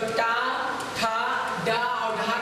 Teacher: टा, ठा, डा और ढा का उच्चारण स्थान क्या होगा, मूर्धा